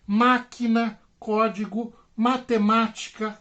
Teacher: a sílaba tônica foi a terceira de trás para frente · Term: proparoxítonas